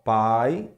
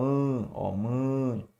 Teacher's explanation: é quando o som passa pela boca e pelo nariz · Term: fonema nasal